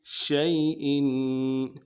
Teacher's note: شیء میں یا لین ہے، نہیں کھینچیں گے، اور حمزہ کی نیچے تنوین ہے، غنہ کریں گے